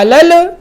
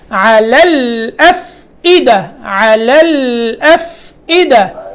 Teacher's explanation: لام کو پکڑ کے آگے حمزہ ادا کرنا ہے